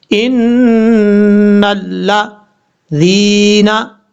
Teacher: لام کو الف کو چھوڑ دیں گے، نون کو ڈائریکٹ لام سے ملائیں گے، ان اللہ ذینا، ذال کے بعد جو یا ہے یہ یا مدہ ہے، ایک الف کی مقدار لمبا کر کے پڑھا جائے گا